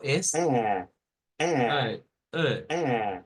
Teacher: Este es un sonido entre A y E, que es más usado en el inglés